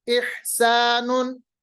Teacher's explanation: इसी तरह अह अहमदु इह इहसानुन इहसानुन, इह हा को अदा करिए बीच वाले हलक से